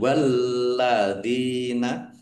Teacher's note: Walladzina lamnya dibaca double, ada tasdidnya, ditekan dan ditahan biar tampak doublenya. Walladzina Zal kasroh ya sukun mat tobi'i.